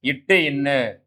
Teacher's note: நாவின் நுனி அன்னத்தின் நுனியை பொருந்தால் பிறக்கும் எழுத்துக்கள் இட்டு இன்னு